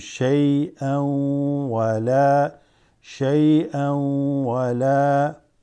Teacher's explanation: Whenever you have shay'an, an followed by wa, this is called idgham. Assimilates, kind of joins together.